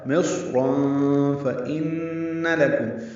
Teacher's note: نون مشدد پہ غنہ ہے · تنوین کے بعد فا آنے کی وجہ سے اخفا ہے.